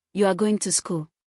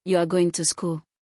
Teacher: Said with falling intonation, it is a declarative statement. Said with rising intonation, it becomes a question.